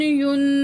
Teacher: کیونکہ نون ساکن اور تنوین کے بعد اکثر رول اپلائی ہوتا ہے، تو یہاں نون ساکن کے بعد صاد حروف اخفا میں سے ہے تو نون کی آواز کو ناک میں چھپا کے پڑھیں گے